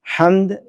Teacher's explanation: اور ہمارے جو پاکستانی غلطی کرتے ہیں بالخصوص پنجابی, الحمدللہ بڑے ایکشن کے ساتھ اور بڑا اونچا لاؤڈ کر کے الحمد, ہاں یہ گلے کے جو ہے نا وہ آخری حصے سے ادا ہوتی ہے, اور ہا جو میٹھی ہا ہے, حمد والی ہا ہے, وہ گلے کے درمیان سے ادا ہوتی ہے